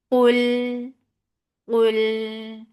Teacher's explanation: Attached with Lam, Lam will get sipa of the wasut, but Lam will be light. Qaf is heavy, Lam is light.